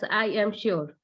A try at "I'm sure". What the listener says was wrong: The I am, you can pronounce it together. I'm sure.